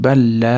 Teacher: ikkita l bir-biriga kirib ketib tashdidli kelyapti mana balla l yana l dan keyin mana alifni cho'zamiz balla